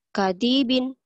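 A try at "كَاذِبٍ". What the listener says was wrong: Gak ada yang panjang. Kadibin.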